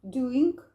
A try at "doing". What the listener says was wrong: Let's short it up. Let's shorten it up.